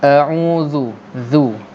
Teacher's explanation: Dia ialah huruf yang keluar apabila hujung lidah dikeluarkan sedikit antara gigi atas dan gigi bawah, dan dia menyentuh hujung gigi kapak atas. Macam kita nak gigit lidah kita, tapi tak gigit lah, kita tak gigit pun, cuma kita sentuhkan hujung lidah yang dikeluarkan sedikit itu ke bawah gigi kapak atas. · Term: Zal